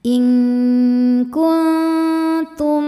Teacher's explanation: mim sukun menghadapi huruf shad, tidak menghadapi huruf mim atau ba. Maka mim sukun dibaca dengan jelas. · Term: idhar syafawi